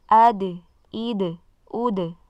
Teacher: tidak ada suara di ujungnya, supaya tidak seolah menambahkan huruf hamzah sukun di ujung. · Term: dal sukun